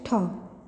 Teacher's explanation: अगली ध्वनि है ठ। यह हिंदी की मूर्धन्य महाप्राण अघोष स्पर्श ध्वनि है। इसका विकास प्राचीन भारतीय आर्य भाषा की त, थ, स्थ, ष्ट ध्वनियों से हुआ है।